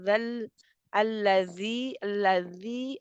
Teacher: زال دانتوں کی جڑ اوپر کے دانتوں کے پہ زبان کا سرا لگتا ہے. زبان کا سرا لگتا ہے اوپر کے دو دانتوں کے سرے سے